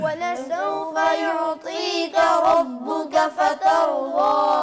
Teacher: را کو موٹا کرنا ہے. یعطیک ربک فترضی, دونوں رائے موٹی ہیں